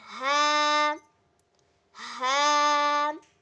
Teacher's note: ہا اور حمزہ یہ دونوں حلق کے آخری حصے سے ادا ہوتے ہیں